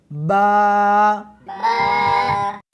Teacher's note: اس حرف کو دونوں ہونٹوں کے ساتھ ملا کر پڑھیں گے۔